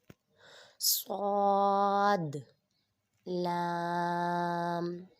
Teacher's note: صاد کو پر پڑھیں گے اور اس میں سیٹی بھی نکالیں گے۔